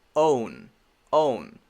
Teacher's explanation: first make the o sound with the w at the end